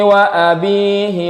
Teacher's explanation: Yang kedua, wa abihi, hi-nya kenapa pendek? Karena sebelumnya ya sukun.